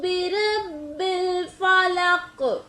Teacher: बिरब्बिल फलक में काफ पर कलकला हो रहा है